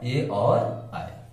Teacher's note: ना तो ये केवल कंठ से बोले जाते हैं और ना ही ये केवल तालु से बोले जाते हैं। ये बोले जाते हैं तो कंठ और तालु के सहयोग से बोले जाते हैं, इसलिए इन्हें कंठ तालव्य वर्ण भी कहा जाता है।